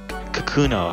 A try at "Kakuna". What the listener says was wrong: He said cocoon, no. Like, when I say vowel, like, the first vowel you think of has to be A, but no, you guess O.